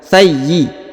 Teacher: Perhatikan huruf ya di sini ditahan dan ditekan ya. Thayyi ya, karena terdapat tanda tasdid.